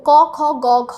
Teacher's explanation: আমরা মাত্র জেনে এসেছি কণ্ঠ দিয়ে যেগুলো উচ্চারিত হয়, যার গৌণ বাক প্রত্যঙ্গ হচ্ছে কণ্ঠ, ক খ গ ঘ, এগুলো আমরা কণ্ঠ দিয়ে উচ্চারণ করি, যার ফলে জিহ্বামূলের প্রয়োজন হয়।